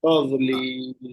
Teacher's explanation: तादोलील में कलकला नहीं होना चाहिए